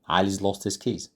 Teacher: And then we have weak forms. So we do not normally say Ali has lost his keys. We normally say Ali's lost.